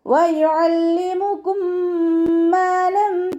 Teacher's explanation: മീം സാക്കിനയുടെ നിയമത്തിലുള്ള ഇദാം. സുക്കൂനായ മീമിനെ അടുത്ത മീമിലേക്ക് ലയിപ്പിച്ച ഉന്നയോടുകൂടി ഓതാൻ ശ്രദ്ധിക്കുക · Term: ഇദാം ഷഫവി